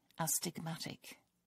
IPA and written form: ˌæstɪɡˈmætɪk (astigmatic)